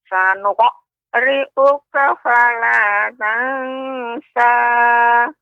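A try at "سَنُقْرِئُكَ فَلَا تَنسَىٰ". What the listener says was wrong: Ya, akan tapi huruf qa ya, pengucapan qa Nek ya tidak apa namanya terlalu cepat. Sanuq akan tapi sanuqri'uka. Sanuqri'uka.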